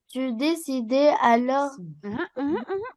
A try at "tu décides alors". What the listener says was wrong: Il n'y a pas d'accent.